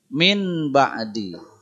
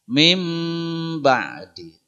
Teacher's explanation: Nun berubah n jadi em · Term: iqlab